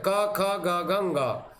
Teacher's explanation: क, ख, ग, घ, ङ, अर्थात इनसे कंठ से उच्चारण होता है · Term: क वर्ग